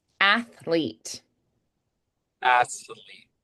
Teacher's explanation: the tongue is sticking out between the top and bottom teeth and then the tongue has to pull back in and flick for that L AET AET so you have to actually pull the tongue back